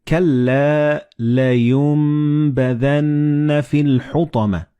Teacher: And this meme appears in the middle of the word. So the noon and ba, when they follow one another in the same word, you don't pronounce noon or ba, but you pronounce meme.